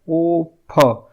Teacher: फ में अब देखिए ओठ हमारा जो है टच हो रहा है, तो ये ओष्ठ ध्वनि हो गया।